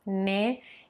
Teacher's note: so the closed and a little longer e sound after the n